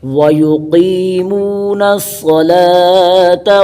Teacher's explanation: صاد پر شد کریں گے، صاد کو پر پڑھیں گے، کھینچیں گے